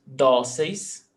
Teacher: Dóceis, paroxítona, 2 syllables, the stressed syllable before last, dóceis, termina em eis, pé, accent mark.